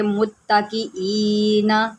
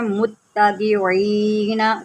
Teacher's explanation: غلطی یہاں پر یہ ہوتی ہے کہ اکثر لوگ پڑھ دیتے ہیں متکئین، تو یہ حمزہ کو جو ہے عین پڑھ جاتے ہیں، تو اس کو عین نہیں، اس کو ہم حمزہ ہی پڑھیں گے